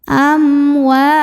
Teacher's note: mim sukunnya dibaca dengan izhar atau jelas amwa wa Mad Thobi'i karena ada Alif yang didahului baris fathah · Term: izhar syafawi